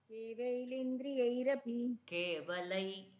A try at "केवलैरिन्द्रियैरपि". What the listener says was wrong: இந்திரி இல்லை, ரிந்திரி. ரீ தான் படிக்கணும்.